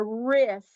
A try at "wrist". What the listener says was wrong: The W is silent. Wrist.